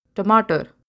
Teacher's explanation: in the word tomato the t sound is actually retro flex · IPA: ʈ